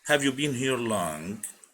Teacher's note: الصوت فيها بيكون منخفض في الأول بيرتفع في نهاية السؤال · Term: rising intonation